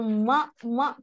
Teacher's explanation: मैंने अपने ऊपर नीचे के दोनों होंठ आपस में मिला लिए हैं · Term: मीम की आवाज